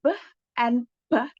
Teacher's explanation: if we obstruct our vocal tract at the lips, like for the sound b and p, the place of articulation is bilabial